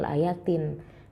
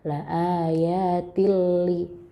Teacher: Jadi ini namanya idgham bila gunnah. Nggak boleh dengung.